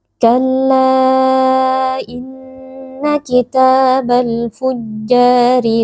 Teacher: huruf ra di sini dibaca tarqik atau tipis karena rnya berharakat kasrah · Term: tarqiq atau tipis